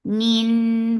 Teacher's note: Noon will get sifa of gunna. This gunna is akmal, so keep the sound in your nose for a longer time.